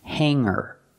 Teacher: the word is pronounced Hangar with no hard G sound